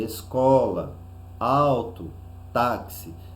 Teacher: a penúltima sílaba for tônica no caso de escola auto táxi então nós vamos perceber que a penúltima sílaba recebeu o maior intensidade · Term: paroxítonas